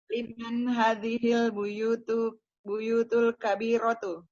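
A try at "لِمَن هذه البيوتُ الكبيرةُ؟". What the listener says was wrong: Intonasi pertanyaannya mana, Bu? Ini kan kata-kata apa kalimat tanya ya.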